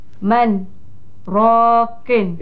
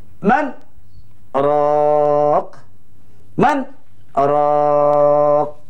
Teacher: Artinya kalimah man hendaklah dibaca dengan hukum izhar, iaitu nyata, terang tanpa dengung. Kemudian saktah diberhenti sebentar tanpa bernafas selama dua harkat. Kemudian dimulakan kalimah seterusnya, rokin.